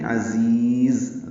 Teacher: عزیز، دونوں ذا تیز صفیر کی آواز سے ادا کریں گے، عین وسط حلق سے ادا کریں گے